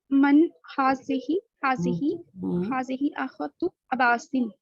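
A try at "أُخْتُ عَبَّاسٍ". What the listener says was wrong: उख्तु अब्बासिन, यहाँ पे उख्तु आ रहा है ना, ये एक पेश है और ये जो एंड पे आ रहा है ये दो पेश होते हैं, थोड़ा सा फर्क करें।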